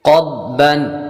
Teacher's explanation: قاف بھی حروف مستعلیہ میں سے اور ضاد بھی حروف مستعلیہ میں سے، دونوں کو پر یعنی موٹا پڑھیں گے